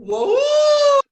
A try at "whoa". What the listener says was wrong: What do you notice about that when you went into the ooh place? So ooh should be more forward in your mouth than oh, and that's the way I heard you say it.